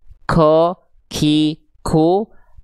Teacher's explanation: kalau teman-teman keluar huruf qofnya ada nafas, berarti teman-teman lihat titiknya berpindah nih